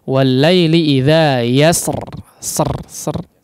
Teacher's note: memang ada riwayat yang menyatakan bahwa ra di sini bisa ditipiskan